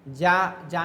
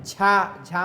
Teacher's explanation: जा जा में कम है झा झा में क्या ज्यादा निकलेगी ये क्या है महाप्राण